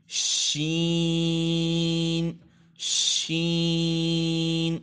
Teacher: یہ حروف شجریہ میں سے ہے، یہ یعنی زبان کے درمیان اور تالو کے درمیان سے ادا ہوتا ہے